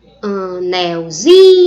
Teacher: o zin passa a ser a sílaba tônica e o nel passa a ser a sílaba subtônica, porque é a sílaba tônica da palavra primitiva. · Quando eu pego a palavra anelzinho, faço essa transformação, o zin passa a ser a sílaba mais forte